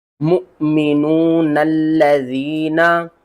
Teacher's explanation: इस नून को लाम के साथ मिला देंगे, ठीक है। ये जो लाम का साइन है ये हमें कह रहा है कि आप नून को इस लाम के साथ मिला सकते हैं।